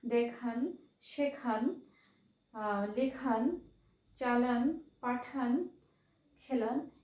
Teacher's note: অর্থাৎ আন প্রত্যয়ান্ত শব্দের শেষের অটা ওকারান্ত রূপে উচ্চারিত হচ্ছে।